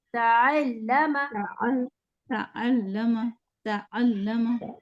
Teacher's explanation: آئین کی آواز نا تا کے ساتھ مرج کر دیں